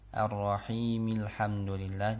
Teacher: huruf mimnya ini harus dibaca kasroh ya, harokat kasrohnya dibaca